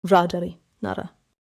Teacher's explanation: For 리을, I should not make an American r. I should tap forward · Quick tap, front of the mouth. That is the key for 리을 here.